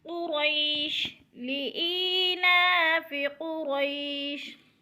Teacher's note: لإیلاف قریش، قریش، قاف پر موٹا پڑھا جائے گا اور را کو بھی پر کر کے پڑھا جائے گا۔ قرئی پہ یا لین ہے، یا ساکن سے پہلے حرف پر زبر ہے تو یا لین، کھینچنا بھی نہیں ہے اور جھٹکا بھی نہیں دینا یا لین کو۔